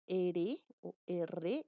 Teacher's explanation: el ápice de la lengua tiene una vibración, vas a sentir una pequeña vibración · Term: vibrantes